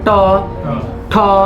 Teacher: जीभ को उलट कर बोलिए ट ठ, जब बोलिएगा आपको उलटना पड़ेगा, अपना जीभ उसमें दबराएगा। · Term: मूर्धा